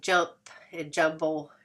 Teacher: sounds are articulated in the same place of the mouth, like jump and jumble, the M and P and M and B combination, both being bilabials